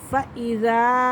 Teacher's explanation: من ربکم، من ربکم، لیس علیکم جناح ان تبتغوا فضلا من ربکم فَإِذَا أَفَضْتُمْ، فَإِذَا، زال الف مد زبر زا، فَإِذَا مد آ رہا ہے، اور یہ 3 سے 4 الف کے برابر اس مد کو کھینچ کے پڑھتے ہیں